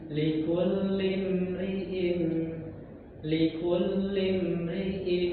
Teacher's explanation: Huruf mim itu enggak boleh enggak boleh dikolqah, Pak.